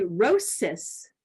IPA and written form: roʊ.sɪs (rosis)